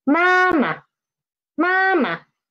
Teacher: we can see the pitch of the neutral tone is lower than the former one